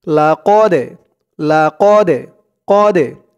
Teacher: লাকদে কদে কফ দিয়ে এই দালকে ধরবে। এই দালটা হচ্ছে কলকলার হরফ, ধাক্কা দিয়ে পড়তে হবে।